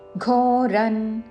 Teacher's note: ఘ ఉన్నది కాబట్టి క వర్గములోని అనునాసిక అంగ్ ఉచ్చారణతో అశాస్త్ర విహిత ఘోరన్ మహాప్రాణక్షరము ఘ అనుస్వారము త వర్గములోని అనునాసిక అన్ ఉచ్చారణ